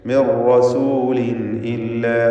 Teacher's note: മിർ റസൂലിൻ ഇല്ല, ഇവിടെ ഇവിടെ തൻവീനും ശേഷം ഹംസയുമാണ്. ഇദ്ഹാർ ഹൽഖി നൽകി തൻവീനിനെ വെളിവാക്കണം, മണിക്കാതെ വെളിവാക്കി ഉച്ചരിക്കുക.